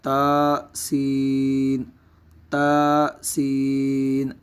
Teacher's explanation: اب یہاں پہ دیکھیں گے تو یا کو ایک الف کی مقدار لمبا کیا جائے گا، جبکہ سین کو مد لازم کی مقدار یعنی 2 یا 2.5 الف کے برابر اس کو بھی لمبا کیا جائے گا۔ تا سین، تا کو ایک الف کی مقدار جبکہ سین کو 2 2.5 الف کی مقدار لمبا کیا جائے گا۔